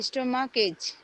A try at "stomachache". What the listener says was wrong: It not H, it ache, like headache. Headache, stomachache. হ্যাঁ, স্টোমাকেক।